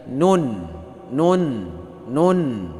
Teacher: Ujung lidah menyentuh gusi gigi atas dengan menyertakan dengung di bawah makhraj lam sedikit. Nah, jadi lidah kita sedikit di bawah makhraj lam.